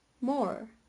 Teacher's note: Okay, so this is the case of verticity, the most noticeable characteristic of general American English. He pronounces the final post-alveolar approximant er, therefore the pronunciation is more.